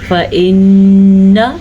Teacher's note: نون کے اوپر غنہ ادا کرنا ہے کیونکہ نون کے اوپر شد آ گئی ہے